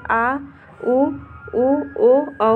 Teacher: पश्च स्वर, जिन स्वरों के उच्चारण में जिह्वा का पिछला भाग स्थापित होता है उन्हें पश्च स्वर कहते हैं